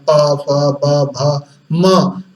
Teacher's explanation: ये सब बिना ओष्ठ के नहीं बोले जा सकते, इनका उच्चारण स्थान ओष्ठ है